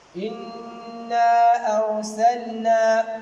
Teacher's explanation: Ici, on a le lam al-sukun, on a lu explicitement, c'est-à-dire on a prononcé le lam explicitement, mais on n'a pas caché le lam, mais on l'a prononcé explicitement parce qu'il est suivi d'un nun. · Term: idhar